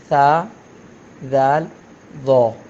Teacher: ऊपर के सामने वाले जो दो दांत हैं उसके किनारे पे जब ज़बान की नोक लगती है तो तीन हुरूफ अदा होते हैं।